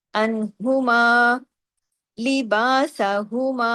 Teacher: ہاں کی آواز سینے کی طرف جائے گی